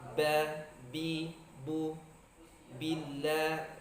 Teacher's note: huruf ba, bi, bu keluar dari syafatain atau kedua bibir